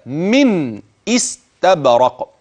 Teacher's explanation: أي أنك ستقطع الحرف الذي قبلها عن الحرف الذي بعدها. سأبين النون ثم آتي بالهمز الذي قطع النون عن السين بعد ذلك، فأنطق من استبرق. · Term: همز قطع